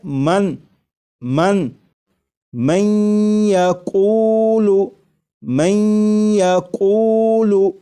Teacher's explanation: میں ادغام کر کے پڑھیں گے، ملا کر پڑھیں گے، اور نون ساکن کو یا میں ادغام اس طرح کریں گے کہ غنہ بھی ہو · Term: نون ساکن کا یا میں ادغام